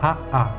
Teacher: las glotales (la glotis es la abertura entre los pliegues vocales) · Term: parada glotal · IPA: /aʔa/